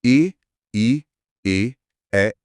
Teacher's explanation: जब हम ए ई ए बोलते हैं तो जीभ का अगला हिस्सा सक्रिय होकर थोड़ा ऊपर उठता है। इसे अग्र स्वर कहते हैं।